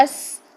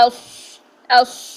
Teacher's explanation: یہ جو صاد ہوتا ہے اس میں بھی سیٹی ہوتی ہے، لیکن فرق کیا ہے سین اور صاد کی سیٹی کا، کہ سین کی سیٹی باریک ہوتی ہے اس، اور صاد کی سیٹی موٹی ہوتی ہے